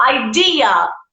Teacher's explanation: the intonation is in the second syllable